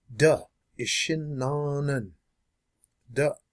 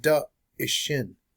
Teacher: That little glottal mark, that little apostrophe, that means you have to stop your airflow 100%. You have to hit the brakes on your air.